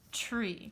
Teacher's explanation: the TR blend at the beginning is very hard for the children to hear, and many of them think that it's making the ch sound. So oftentimes I will see something like this for tree, and that's okay.